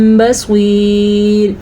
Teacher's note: ہم نے سواد کو پر پڑھا کیونکہ سواد حروف مستعلیہ میں سے ہے